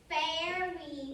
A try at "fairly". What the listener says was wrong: I didn't hear you say the L sound. I heard fairy. I want to hear fairly.